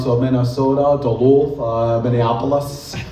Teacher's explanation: as you go into Minnesota, the vowels get rounded out